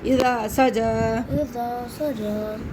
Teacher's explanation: اذا سجا سجا الف مد تالی سے پہلے زبر اور کھڑا زبر دونوں کو کھینچنا ہے